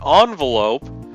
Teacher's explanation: the French influence is to say the first syllable like on rather than in but we say the rest of the word english style the